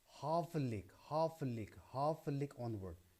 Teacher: the first syllable is stress and the following two syllables is unstressed or weak · 1 stressed or strong syllable followed by 2 unstressed or weak syllables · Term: dactyl, dactyl dimeter